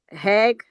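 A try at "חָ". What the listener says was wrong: Well, that makes the ah sound, right? That's the kamats. Kamat.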